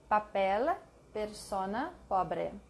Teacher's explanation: P, not explosive, without the puff of air. Without the puff of air, which is typical in English.